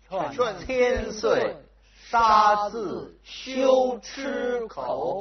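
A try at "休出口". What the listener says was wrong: 修 吃 口 ， 别 给 把 这 出 字 变 成 吃 。 修 吃 吃 口 ，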